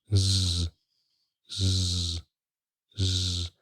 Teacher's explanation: feel the vibration when your vocal cords vibrate with the voiced sound